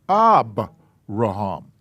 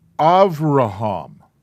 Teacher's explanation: is a vet the difference between the two is that dot the dot changes the bet into a b sound without it it's a v sound